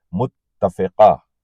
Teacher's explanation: اس میں تے پہ تشدید ہے تو تے دو بار پڑھا جائے گا